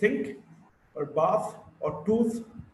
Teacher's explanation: th is a voiceless dental fricative